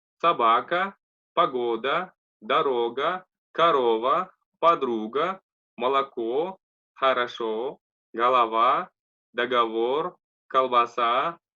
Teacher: буква О под ударением читается как О, без ударения как А